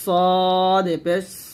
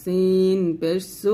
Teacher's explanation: সদ হবে মোটা সিন হবে পাতলা জিব্বাটা নিচে দাঁতে লাগবে তবে সদর বলতে হবে মোটা করে সদর